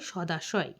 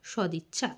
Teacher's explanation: এখানে দেখো সব ক্ষেত্রে দেখা যাবে বর্গের প্রথম পরে স্বরধ্বনি থাকায় সন্ধির সময় বর্গের প্রথম ধ্বনিটি ঘোষীভবনের ফলে বর্গের তৃতীয় ধ্বনির রূপ নিয়েছে